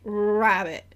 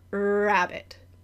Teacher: if you just get the backing of the tongue and you don't get the lips involved sometimes you get a little like RW hybrid